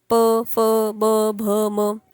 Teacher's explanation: आमच्या उच्चारणामुळे ओठ जे आहे ते मिळतात संमिलत म्हणजे मिळतात ज्यावेळेस तुम्ही प म्हणतात त्यावेळेस तुमची जीभ वगैरे